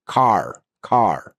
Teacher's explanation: Americans will strongly pronounce the R.